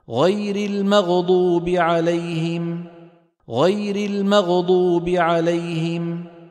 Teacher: لانه لم يعطي الغين حقها من الرخاوه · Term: قلقلت